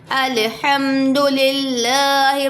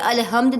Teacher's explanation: देखिए हा को बारीक निकालेंगे